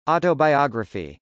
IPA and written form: ˌɔtəbɑɪˈɑgrəfi (autobiography)